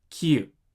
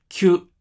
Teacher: キに小さいユがつくとキユがキュに縮みます。 同じくキにヨがつくとキヨがキョに縮みます。まとめます。イダンのキはヤユヨがつくとキャキュキョに変化します。陽音はイダンのキシチニヒミリから作られます。小さなヤがつくとキャシャチャニャヒャミャリャ。小さなユがつくとキュシュチュニュヒュミュリュ。そして小さなヨがつくとキョショチョニョヒョミョリョと変化します。このようにイダンとヤユヨで陽音は作られています。ここでヤユヨは半母音です。セミバウルであり、半母音は母音のあ、う、おに近い音です。この知識があると、陽音の発音が理解しやすくなります。また、イダンの濁音であるギ、ジ、ビ、ピも陽音に変化します。ギャ、ギュギョ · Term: contracted sound